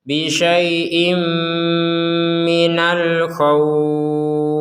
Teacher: Ada tanwin bertemu mim, maka kita masukkan tanwin ini kepada huruf mim sehingga menjadi bisyai'im dan disertai dengungan.